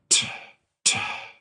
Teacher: there's a moment after the T starts where air is just kind of flowing out